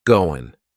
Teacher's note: That final G in the word going is going to be cut off, and we'll just say, goin'.